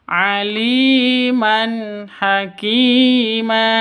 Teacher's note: Berarti tanwin bertemu dengan ha itu jelas. Cara bacanya jelas terang. Kenapa? Karena bacaan izhar. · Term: Izhar halqi